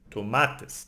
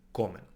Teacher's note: we need to emphasize the second last syllable